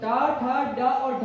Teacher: उसके बाद टा वर्ग वाले पहले 4 वर्ण टा, ठा, डा और ढा का उच्चारण कहां से किया जाता है, मूर्धा से किया जाता है।